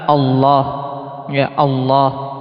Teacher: makhrajnya lam ditebalkan jadi dinaikkan bagian belakang lisannya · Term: lam yang mufakham